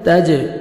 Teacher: جیم حروف قلقلہ میں سے ہے، ڈبل ساؤنڈ آئے گا